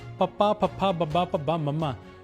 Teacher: ਇਸ ਨੂੰ ਬੋਲਣ ਲੱਗਿਆ ਸਾਡੇ ਬੁੱਲ ਆਪਸ ਚ ਜੁੜਦੇ ਨੇ ਇਸ ਕਰਕੇ ਇਸ ਨੂੰ ਦੋ ਹੋਠੀ ਧੁਨੀਆਂ ਕਿਹਾ ਜਾਂਦਾ।